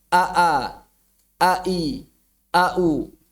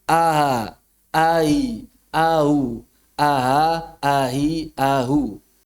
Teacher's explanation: Mengubah hamzah yang syadidah menjadi hamzah yang rikhwah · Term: hamzah musahhalah